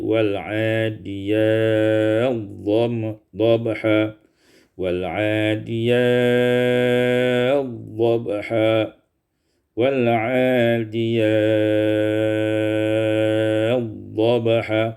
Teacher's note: Pada surat Al-Adiyat, pada ayat yang pertama, wal adiyati dhabha, idgham ta fi dhad, idghamkan ta pada dhad menjadi wal adiyat dhabha, wal adiyat dhabha, wal adiyat dhabha, qasar, tawassut dan isba'.